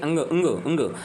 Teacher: ये कहां से बोला जाता है ये नाक से बोला जाता है तो इसलिए इसको नाशिक व्यंजन भी कहा जाता है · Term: नासिक व्यंजन